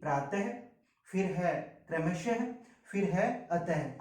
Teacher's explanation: फिर हम बात करते हैं विसर्ग की। विसर्ग का जो उच्चारण है हम हल्के रूप में करते हैं, हल्के मतलब धीमे रूप में, जिसमें है की ध्वनि आती है।